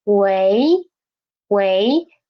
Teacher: in this situation we will use the second tone more than fourth tone